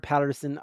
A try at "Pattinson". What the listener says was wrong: Pattinson. we were listening to the last because you kept saying Patterson, Pattinson. there's no R in the last name.